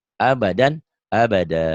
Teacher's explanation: Mad iwad. Mad panjang, iwad pengganti. Jadi pengganti dua patah ini jadi panjang satu.